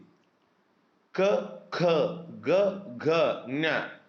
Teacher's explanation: ಕಂಠ್ಯಕ್ಷರಗಳು ಅಂದ್ರೆ ಕಂಠದ ಸಹಾಯದಿಂದ ಹುಟ್ಟುವಂತಹ ಅಕ್ಷರಗಳು ಅಂದ್ರೆ ಈ ಕುತ್ತಿಗೆ ಇದೆಯಲ್ಲ ಈ ಕಂಠದ ಸಹಾಯದಿಂದ ನೀವು ಬೇಕಿದ್ರೆ ಅದನ್ನ ಟ್ರಯಲ್